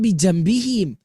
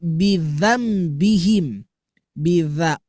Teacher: Bukan Jambi. Kalau Jambi tengah lidah yang naik ke atas. Ini mah ujung lidah ke belakang gigi.